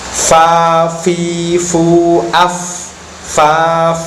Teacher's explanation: bibir bawah bagian dalam terkena ujung gigi atas bibir tidak dimasukkan